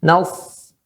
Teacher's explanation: Itu bibir tidak dikedepankan, ya, atau hanya sedikit saja menyesuaikan, kemudian suara ditekankan ke atas karena ada sifat itbaq.